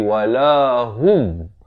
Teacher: Ha pada dhammah bunyi hu, bukan bunyi ho.